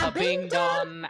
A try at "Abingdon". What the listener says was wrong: You don't pronounce the hard G. It's a very soft G. It's just Abingdon. Just like there's a hair of N. There's the hair of N in there. No, not a harding.